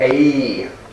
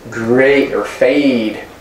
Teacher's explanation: The vowel as in they, it's not eh, but a. It's a glide, a, or great or fade.